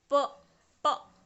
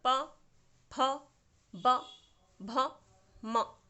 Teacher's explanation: ये जो प वर्ग है, प प देखिए प हम बोल रहे हैं तो हमारे होंठ, जो हमारे लिप्स हैं, जो हमारे ओंठ हैं, ये एक दूसरे से मिल रहे हैं, जुड़ जाते हैं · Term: ओष्ठ